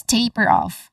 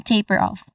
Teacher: Stressed on the first syllable.